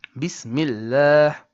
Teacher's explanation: This time, if you have it before the word Allah, you read the lam of the word Allah with a flat or light or thin letter. And in Tajweed, we call this tarqiq, which means thinness, flat or light letter.